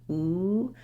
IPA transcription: u